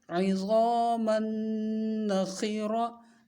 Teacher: خا کو ہر حال میں موٹا ہی پڑھا جاتا ہے. را کو موٹا پڑھیں گے کیونکہ را کے اوپر زبر ہے. تا دو زبر تن ہے، ملا کر تن پڑھیں گے اور حالت وقف میں ہا پڑھیں گے، تا نہیں پڑھیں گے.